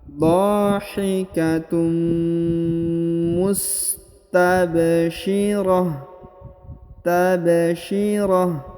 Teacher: Huruf ba berharokat sukun atau berharokat mati. Karena dia berharokat sukun, maka dia harus dibaca pantul atau dibaca qalqalah. Karena huruf ba yang berharokat sukun adalah salah satu daripada huruf-huruf pantul atau huruf qalqalah.